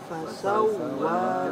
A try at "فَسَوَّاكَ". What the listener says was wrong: Lebih dinaikkan. Fasawwaka. Tidak cukup fasawwaka.